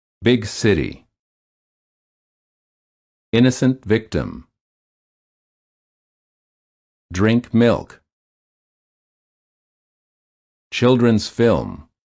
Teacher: the lips are slightly parted and relaxed the tongue is also relaxed and high but not as high as for the e sound the sides of the tongue touch the upper back teeth the